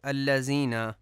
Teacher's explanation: الذین میں ذال کو زے پڑھا جاتا ہے